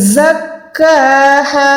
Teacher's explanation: زا پراپر سیٹی والا حروف ہے, اس کی ادائیگی کرتے ہوئے دونوں دانتوں کو آپس میں ملا کے زور دے کے پڑھیں